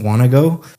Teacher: Want to go sounds like one word, want to go, cuz you're connecting all the speech up.